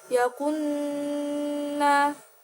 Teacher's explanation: dibaca dengung karena nun bertasydid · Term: gunah